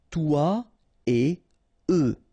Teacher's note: So when you get this et, remember, no liaison after.